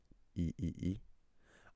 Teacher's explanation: E is a high vowel, a front vowel. So you can feel your tongue going e and it's also unrounded, right?